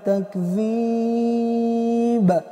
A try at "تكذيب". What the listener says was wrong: تجب قلقل مشى تكذيب